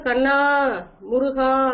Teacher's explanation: தூரத்துல இருக்கும்போது கண்ணா முருகா, அப்ப இந்த அளபடையானது நீண்டு ஒலிக்கும்